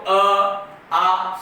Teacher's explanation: सीधे कंठ से आवाज निकल रही है